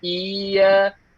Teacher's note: Kesalahan yang biasa kita dengar ialah apabila mereka baca iyyaka na'budu wa iya tu dah macam apa? Macam tak ada sabdu. Kira-kira dia macam baca huruful mad. Macam baca dua harakat.